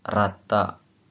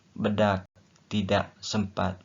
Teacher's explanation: fonem A yang berada dalam suku kata terbuka, kedengarannya lebih nyaring bila dibandingkan dengan fonem A yang terdapat dalam suku kata tertutup